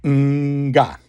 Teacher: It's nga. And that's made with the back of the tongue. And normally that would be words with the N and G in it.